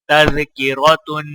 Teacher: را کے اوپر زبر ہے تو لہٰذا را کو موٹا پڑھا جائے گا